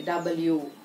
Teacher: అదే డబ్ల్యూ pronounce చేస్తున్నప్పుడు రెండు లిప్స్ ఇలా రౌండ్ గా వస్తాయి.